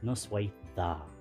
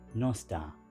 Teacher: Instead of da, we say dda with a th sound.